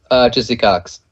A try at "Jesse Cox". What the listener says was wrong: Jizzy Cox. You said it kind of fast, man.